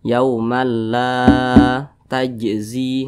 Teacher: berbaris ke atas dan posisinya tepat berada di belakang huruf alif Mat Thobi'i panjangnya dua harakat atau kira-kira dua ketukan